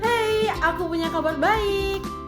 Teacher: si A mengucapkan dengan nada tinggi dan semangat